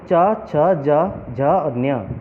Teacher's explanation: इन सभी अक्षरों को उच्चारण करते समय आपकी जीभ तालू में लगती है। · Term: तालव्य व्यंजन